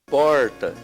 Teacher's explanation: É o R chamado retroflexo.